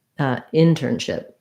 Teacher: Actually, it's not stressed on ship. Sorry. Internship. Stressed on in.